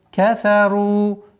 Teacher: Твердое произношение ра после двух мягких звуков. Кафару. Два счета.